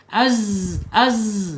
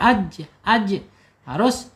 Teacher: Sofir ya mempunyai sifat saofir ya. Desis, mendesis. Az az ya desisan.